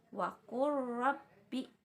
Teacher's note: jadi huruf lamnya itu dileburkan seolah-olah tidak ada, tapi dia itu ada ya. Jadi saat kalian membaca contoh yang termasuk ke dalam hukum idgham, huruf pertamanya itu ingat kalian leburkan atau kalian seperti membacanya itu seperti mentasydidkan.